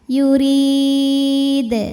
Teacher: Karena huruf qalqalah ini sukunnya karena berhenti ya, bukan sukun asli. Dibacanya dipantulkan dengan pantulan yang lebih besar. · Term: qalqalah kubra